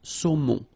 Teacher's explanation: O-N, remember, nasal in your nose.